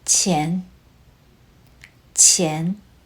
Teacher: The second tone starts lower and rises upward, almost like you are asking a question.